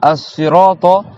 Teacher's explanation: Tu as le bout de la langue qui vient au niveau de là. Et le derrière de la langue, il se gonfle un peu. Et l'air, il passe entre les dents. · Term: S emphatique